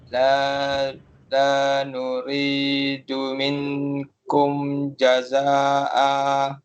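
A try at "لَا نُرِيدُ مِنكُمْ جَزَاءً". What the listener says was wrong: Bila mana kita sebut minkum tadi tu, dia jadi minkum. Bila kita sebut minkum, itu kita dah jelaskan huruf nun tu. Sekarang ni kita nak ikhfa kan, kita nak sembunyikan huruf nun tadi tu. Minkum.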